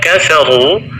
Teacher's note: huruf ra terbaca tebal karena berharakat dhammah